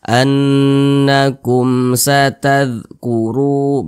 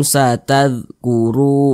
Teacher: Tapi kalau ada huruf mim sukun tidak berjumpa dengan huruf ba, tidak berjumpa dengan huruf mim, maka hukumnya izhar syafawi. Karena dia izhar dibaca jelas, tidak berdengung, pendek saja kita baca annakum satadhkuru, begitu.